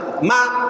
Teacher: kalau kita pencet hidung kita nih, buktinya bahwa mim itu keluar dari hidung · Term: rongga hidung